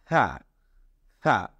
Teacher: আপনি দেখুন আপনার হাতটা সামনে রাখুন এরপরে উচ্চারণ করুন হা দেখবেন হালকা একটু বাতাস আপনার দাঁত এবং জিউভার মাঝখান থেকে বের হচ্ছে